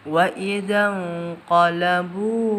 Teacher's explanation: Idzan itu ikhfa hakiki ab'ad atau jauh dibaca samar 2 harakat.